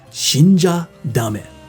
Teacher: if the sound is a voiced sound like we've learned well instead of it being a cha it's now a ja so it's making the cha voiced ja